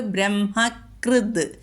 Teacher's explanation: ത മാറിയിട്ട് മൃദുവായി, ദ ആയി